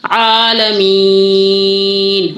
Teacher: آ کی آواز آ گئی، منہ کھول کے ادا ہوگا، حلق واضح ہوگا درمیانے حلق سے